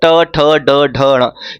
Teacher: जीव है हमारी क्या मूर्धा से लग रही है, यानी कि दांत के जस्ट पीछे जो मसूड़े होते हैं उससे लग रही है, तो ये वाला जो कौन सा वर्ग होता है ये मूर्धा वर्ग हो जाता है।